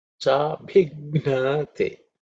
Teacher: So there are some aspirated sounds. So the B is the fourth letter in the Pavarga, so Mahaprana. So that means extra air, wind, aspiration.